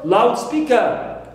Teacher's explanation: Also for loudspeaker, as one word, one compound word and a noun, I stress the first element. But if I refer to it as a noun phrase, a loud speaker, an orator who gives a speech, a person, any person.